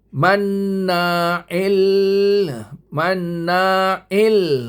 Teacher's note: Tetapi ini idgham billah ghuna. Tidak ada dengung. Masuk terus.